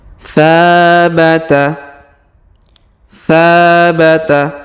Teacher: Huruf tha kita panjangkan 2 harokat karena di depannya terdapat alif.